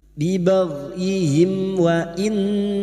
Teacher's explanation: mim sukun bertemu wau dibaca jelas tanpa mendengung